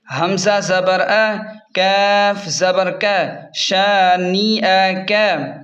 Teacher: شین کو ایک الف کے برابر لمبا کریں گے، نون اور حمزہ کو جلدی پڑھیں گے